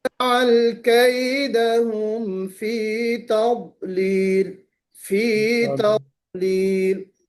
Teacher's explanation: تا کو باریک پڑھنا ہے، ضاد کو موٹا پڑھنا